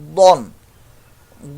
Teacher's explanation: ضاد with thick voice because is مستعلیہ letter